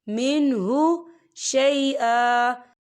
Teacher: यहाँ देखिए आपको छोटी सी तोही लिखी हुई नजर आ रही है, तो ये वफ़ मतलब की अलामत है, तो यहाँ पर ठहरना बेहतर है। वफ़ की सूरत में 1 ज़बर पढ़ा जाएगा, 2 ज़बर नहीं पढ़े जाएंगे।